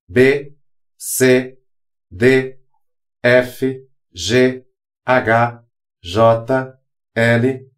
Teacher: Se você perceber, o B, você fecha os seus lábios